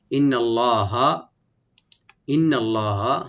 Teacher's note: ইন্নাল্লাহা, ইন্নাল্লাহা, হামজাকে রাইট দিবেন, নুন মোসাদ এখানে আমরা ওয়াজিব গুন্না করে একালি পরিমাণ গুন্না করব, টানবো না। ইন্নাল্লাহা লফজ জালাল এখানে ডিপ হবে।